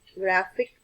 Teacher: the stress can be located at the second syllable from the end of the word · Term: penultimate syllable